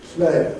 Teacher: if we have the word play then we would devoice the L